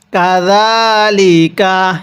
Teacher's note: কাপের মধ্যে টান দিব না, জালের মধ্যে এক আলিফ টান দিব,